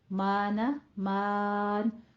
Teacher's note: اب اس کو مان نہیں کہنا، آپ نے میم الف کے بعد نون غنہ کا اضافہ نہیں کرنا